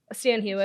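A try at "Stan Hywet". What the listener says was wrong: Hewitt. Well, it's not pronounced Hewitt. It's pronounced Highwit.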